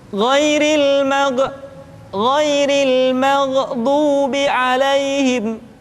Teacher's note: Kalimat maghdu yang semestinya tidak mantul sering dibaca dengan mantul, maghdu. Atau kalimat fi tadlil seringkali dibaca fi tadlil, fi tadlil.